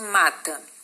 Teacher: Mata é uma paroxítona. Por quê? Porque a sílaba mais forte é o ma, tá? Então, ela é uma paroxítona terminada em A.